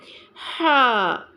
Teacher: ہا کو ادا کرتے ہوئے وسط حلق استعمال ہوتا ہے، یعنی حلق کا وہ درمیانی حصہ جس سے آواز نکلتی ہے